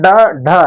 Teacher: ड और ढ का उच्चारण करते समय जिह्वा ऊपर उठकर शीघ्रता से नीचे की तरफ आती है, अतः इन्हें जैसे ड, तो हमारी जो जीभ है वो ऊपर उठ करके तुरंत ही नीचे गिर जाती है, मतलब शीघ्रता से। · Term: उक्षिप्त व्यंजन, द्विगुण व्यंजन